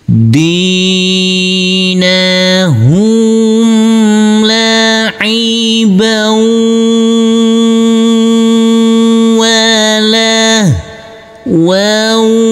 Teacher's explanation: Huruf ba yang berfathah tanwin bertemu dengan huruf wawu yang bertasdid, ini adalah bacaan idgham bihunna, maka huruf ba langsung masuk ke huruf wawu. Tanwinnya di sini fathah tanwin, kita leburkan, huruf wawu kita tekan, kita tahan serta kita dengungkan.